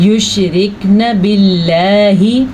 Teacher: اللہ کا نام باریک پڑھنا ہے کیونکہ اللہ کے نام سے پہلے زیر ہے